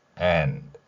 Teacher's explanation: and까지는 강하게 발음이 됩니다. 그리고 디귿은 약하게 흘리듯이 소리가 나지요.